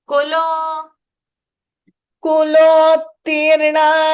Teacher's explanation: ku you go fast, but lo you can pause